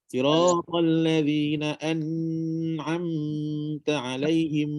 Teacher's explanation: Dengung dia tak panjang macam dengung sabdu. Dengung dia hanyalah kalau kita buat ukuran, dengung dia kita kira satu jari je lah.